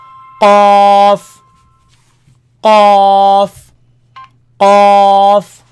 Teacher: Feel it all the way back touching the soft palate.